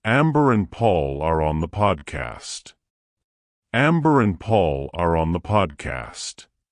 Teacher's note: some of the th sounds sometimes they sound a bit like D or V sounds